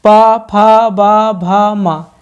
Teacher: बिना ओठ से ओठ मिलाए इन्हें बोला ही नहीं जा सकता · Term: ओष्ठ